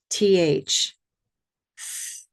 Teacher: Place your teeth on your tongue and gently push the air through. Yeah, it's a continuous sound and it's a voiceless sound. There's no voice. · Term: TH sound